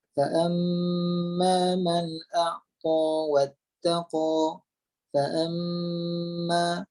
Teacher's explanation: Maka kita akan tahan dulu mim tu pada bibir kita sehinggalah kita tekan mim tu dan naik pada hidung menghasilkan bunyi dengung. Okey, maka itulah dinamakan dengan dengung dan disitulah keluarnya al-khayshum.